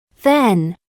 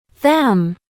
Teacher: La M es un sonido nasal bilabial.